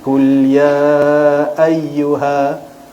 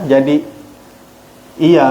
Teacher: Ayyuha, kemudian ada huruf ya yang bertanda sabdu. Huruf ya bersabdu dibaca dengan henjutan ringan.